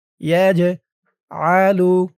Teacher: ইয়া দিয়ে জিম ধরবে, জিমটা কলকলার হরফ, ধাক্কা দিয়ে পড়তে হবে।